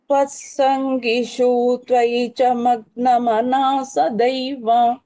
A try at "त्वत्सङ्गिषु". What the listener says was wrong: அங்க வந்து த்வத் சங்கிஷு ஷூன்னு தீர்க்கமா சொல்ல வேண்டாம், சங்கிஷு அவ்வளவுதான், ஹரஸ்வாவா சொல்லுங்க அது.